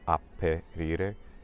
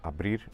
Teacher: But in Spanish the word actually becomes abrir, so it changes from a p to a b sound because that p sound was originally between two vowels, and the consonant sounds between two vowels in Spanish, they generally gain voicing.